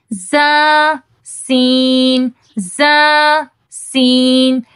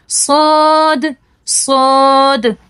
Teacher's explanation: باریک پڑھے جاتے ہیں، یہ دونوں ہلکے ہیں، اور صاد یہ مفخم ہے، موٹا پڑھا جاتا ہے، منہ بھر کے پڑھا جاتا ہے، تھوڑا بھاری پڑھا جاتا ہے